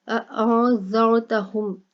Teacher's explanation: اَأَنذَرْتَهُمْ، نون، نون ساکن ہے، اس کے بعد زال آ گیا، ٹھیک ہے، تو زال جو ہے حروف اخفا ہے تو نون کے اوپر اخفا کر کے پڑھیں گے، اور یہاں پر را ہے اس کو موٹا کر کے پڑھا جائے گا، را ساکن اور پیچھے زبر ہے، ٹھیک ہے، تو را موٹا کر کے پڑھا جائے گا